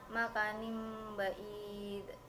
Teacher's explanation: suara nun tanwin dirubah yang asalnya n menjadi m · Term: iklab